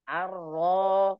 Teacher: Ada getar, ada tawassut, ada tafkhim ya saat fathah.